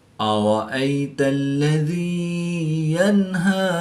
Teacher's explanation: یا ساکن سے پہلے زیر ہے تو یا مدہ اس کو ایک الف یعنی 2 حرکات کے برابر کھینچ کر پڑھیں گے